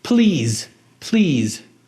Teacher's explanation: Beleza, som de I com som de Z no final.